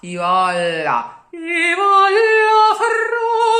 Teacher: No double R whatsoever, and a very wide open O.